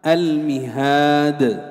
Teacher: إذا وقفت على هذه الكلمة سكنت الدال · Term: مد عارض للسكون